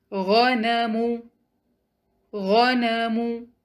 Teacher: اس word میں کوئی بھی مد لیٹر نظر نہیں آ رہا، تو سب لیٹرز کو سنگل کاؤنٹ پڑھیں گے